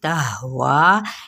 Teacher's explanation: ہا جون سا ہے کہاں سے اقصی حلق سے ادا ہوگا · وا کو 4 حرکات کے برابر کھینچ دے